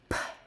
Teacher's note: Say p. You should feel a clear burst of air.